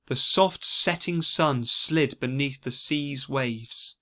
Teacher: The repetition of soft sounds in a number of words, like S and sh and z. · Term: Sibilance